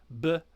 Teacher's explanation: it's with the two lips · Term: labial letters